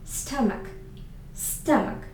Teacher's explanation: And this is also a noun. It's a name. So you should stress on the first syllable.